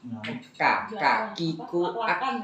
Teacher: Iya, nyamuk lah kak. Bukan di tenggorokan, tapi itu kaf itu dia di pangkal lidah.